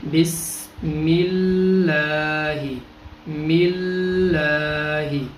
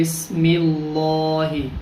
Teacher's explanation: تو جب زیر آ جائے گی تو پھر لفظ اللہ کو باریک پڑھیں گے، جیسے بسم اللہ، ملہ، میم لام زیر مل، لام کھڑا زبر لا، ملہ حاضر ہی، بسم اللہ.